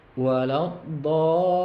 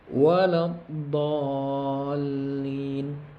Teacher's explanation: dha dibaca 6 harkat ataupun 6 ketukan dan harus ada jelas tasydidnya di lam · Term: mad lazim mutsaqal kilmi